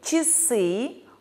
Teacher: гласный а после мягких согласных слышится как и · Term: редукции